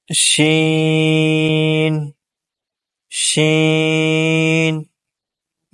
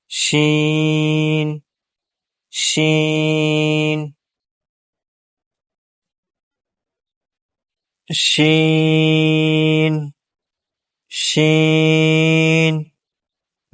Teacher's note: بیچ زبان اور اس کے مقابل اوپر کا تالو، اس سے حرف شین ادا ہوتا ہے